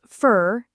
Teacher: for becomes fur in this is for you. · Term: weak forms